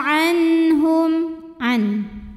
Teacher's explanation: Kemudian hukumnya adalah idhar halqi ya. Sebab ada nun sukun ketemu huruf halqi atau huruf tenggorokan yaitu ha. Maka nun sukun kita bunyikan dengan jelas